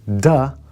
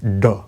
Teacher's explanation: So it makes the du sound, not the duh sound like d. You take your tongue and instead of putting it like the front like the teeth of your mouth, you put it to the roof of your mouth.